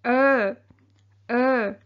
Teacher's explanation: các bạn đưa cái đầu lưỡi lên cong vào trong á thì nghe như vậy